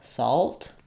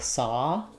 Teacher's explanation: I think when we add the alt, it does change that ah vowel. It's not so open as an ah, like saw.